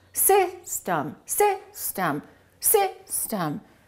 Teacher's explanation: The first syllable is stressed, the second syllable is reduced. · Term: reduced vowel